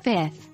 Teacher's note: more examples one fifth often pronounced as fifth this is because having two F sounds so close together can be difficult to pronounce so the second F sound often gets dropped